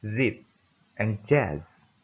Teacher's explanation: Air is forced through tongue and alveolar ridge.